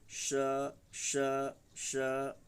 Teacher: उच्चारण एक बार फिर से देखो, पहले वाले को कहते हैं तालव्य श, माने जो हमारा दांत के ऊपर जो तालु है, जीभ को थोड़ा वहाँ सटाएंगे और तब बोलेंगे हम लोग श श श।